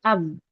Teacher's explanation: nggak bisa suara lewat kedua bibir, itu ketahan namanya. Yang kita namakan dengan syiddah.